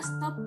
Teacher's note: bunyi t dalam bahasa Inggris yang biasanya diucapkan secara apiko alveolar Tetapi bila terdapat sebelum bunyi es maka menyesuaikan diri dengan artikulasi laminoalveolar bunyi es tersebut menjadi laminoalveolar tersendiri di dalam kata stop misalnya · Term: asimilasi fonetis